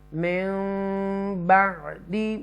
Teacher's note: نون ساکنہ کے بعد با آ رہا ہے تو یہاں اقلاب ہوگا اور گنہ بھی کریں گے